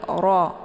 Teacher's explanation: Kemudian ro-nya dibaca pendek ya. Ini bacaan hukum ro ini adalah tafkhim ya, tebal. Jadi ro, ujung lidahnya terangkat ke langit, bukan nara, tapi ro.